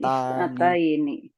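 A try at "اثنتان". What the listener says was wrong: Bukan isnataini tapi isnatani. Kalau isnataini itu nanti ada pembahasan lagi. usrotani, isnatani. Nah, jadi polanya natani, usrotani, isnatani.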